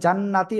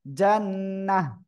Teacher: গোলতা হা হয়ে যাবে এবং সাকিন হবে